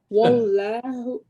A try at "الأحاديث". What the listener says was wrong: أحاديث not s.